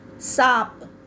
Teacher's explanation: तो आप देखेंगे कि इन सारे शब्दों में चंद्र बिंदु का प्रयोग किया गया है और हवा मुख के साथ साथ नाक से भी निकलती है · 5 बोलते में आधी हवा हमारे नाक से निकली और आधी मुख से। दांत, यानी कि हम नाक में भी बोल रहे हैं और मुंह से भी उच्चारण हो रहा है। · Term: अनुनासिक